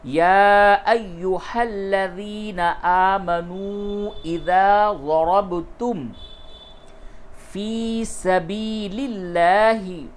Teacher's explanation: اذا ضربتم، یا ایہا الذین آمنوا اذا ضربتم فی سبیل اللہ، فا یا زیر فی کو تھوڑا سا کھینچیں، یہ یا مدہ ہے · با میں قلقلہ کیجئے اور را کو موٹا کیجئے